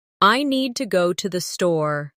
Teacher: The stress is on need and store. While to and the are softer and faster. This rhythm is one of the biggest differences between learners and native speakers.